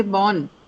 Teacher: It's a minor difference yet a relatively longer sound than the sound that you hear in cut and rough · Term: long vowel sound